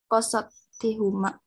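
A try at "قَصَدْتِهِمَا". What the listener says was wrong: Kalau ada qasati, jangan dibaca hu lagi ya. Nanti mulutnya miak-miok gitu ya. Jadi harusnya bacanya gimana? Qasadtihima. Itu boleh diubah-ubah itu ya. Tergantung harakat sebelumnya. Qasadtihima.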